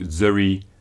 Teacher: The Proto-Albanian word zani for voice has become zani in Geg, but has changed to zuri in Tosk, with the N changing to R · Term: rhoticism